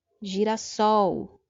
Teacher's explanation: perceba que essa última sílaba é a forte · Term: oxítona